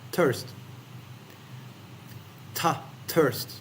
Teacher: in thirst the tongue is still staying with the teeth